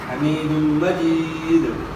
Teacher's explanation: ساکن ہو جائے گا تو دال حروف قلقلہ میں سے ہے، تو پھر قلقلہ بھی ہوگا،